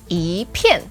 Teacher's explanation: when 一 is together paired with a fourth tone, it becomes the second tone